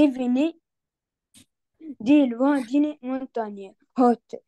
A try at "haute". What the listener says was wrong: On ne prononce pas le H en français, hein, ça c'est en anglais. On dit haute.